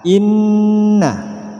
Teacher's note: Semua nun yang bertasydid ataupun mim, cara bacanya didengungkan, ditahan.